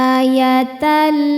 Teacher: Ketika lam bertasydid ini sebetulnya lamnya dua, lam sukun dan lam fathah. Lam yang sukun tidak dibaca langsung masuk ke lam yang fathah. · Berikutnya ada idgham bila gunnah sebab ada tanwin fathah menghadapi huruf lam. Cara bacanya tanwin ini dileburkan ke lam, ayatan, tidak disertai dengung, jadi cukup ditekan saja. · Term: idgham bila ghunah, alif lam syamsiyah